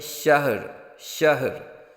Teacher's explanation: ہا کو ساکن کریں گے، ہا کو متحرک نہیں ہونے دیں گے وقف کرتے وقت۔ اکثر جو ہے وہ الفی شہر پڑھ جاتے ہیں، تو شہر لفظ نہیں ہے بلکہ شہر، شہر۔ · را کو ساکن کریں گے لیکن را کی آواز بھی ظاہر کریں گے